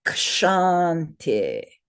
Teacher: we have a long first vowel, 2 beats, and a short second vowel